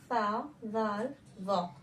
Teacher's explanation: मखरज है हमारा जबान की नोक को सनाया उलिया की। ये हमारी जबान की नोक है, जैसे कि यहाँ पर दिख रहा है, यानी रासे लिसान। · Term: हरूफ़े लिसाविया